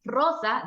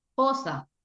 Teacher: Yo, por ejemplo, sustituía la R por la J. En lugar de decir rosa, decía josa. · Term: sustitución